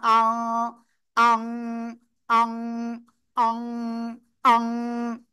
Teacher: তাহলে নাকের ভিতরে নিয়ে গুণনা করতে হবে, অনুসারের মতো গুণনা হবে